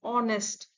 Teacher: the sound H is silent. The word begins with the vowel sound O, honest.